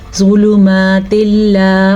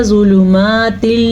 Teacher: नून साकिन या तनवीन के बाद लाम या रॉ आ जाए तो दोनों को आपस में मिलाना ज़रूरी है. मिलाने के साथ साथ गुन्ना नहीं करना. इसको कहते हैं इदगाम बिला गुन्ना